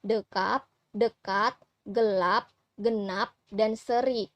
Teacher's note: mid tengah dengan posisi lidah bagian pusat yaitu pada bunyi E